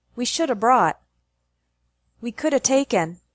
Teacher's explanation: should have and could have sound like shoulda and coulda